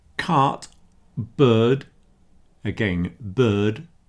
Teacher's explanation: generally speaking in English, South Africa, Australia, New Zealand, those kind of countries, you don't hear the R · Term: nonrotic English